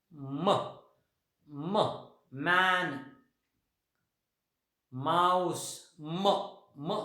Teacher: वरचा ओठ आणि खालचा ओठ अशा पद्धतीने आपण एक त्या दोघांच्या मदतीने हा साऊंड तयार करतो.